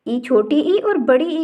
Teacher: ई, छोटी ई और बड़ी ई का उच्चारण करने पर जीभ का पिछला हिस्सा तालु को स्पर्श करता है। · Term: तालव्य